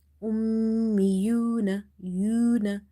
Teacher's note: So here meme is connected with this hamza, then again next with this ya, but itself it's having shadda, so there is a gunna in the meme sound